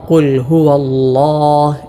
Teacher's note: തഫ്ഖീം ചെയ്ത് തടിപ്പിച്ചുകൊണ്ട് ഉച്ചരിക്കുന്ന ലാമാണ് അല്ലാഹ് എന്ന ജലാലത്തിൻ്റെ ഇസ്മിലെ ലാം.